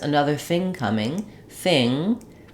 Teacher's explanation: Another thing coming, thing, my ng sound continues.